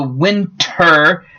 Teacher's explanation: when you're talking about a winter storm the t almost disappears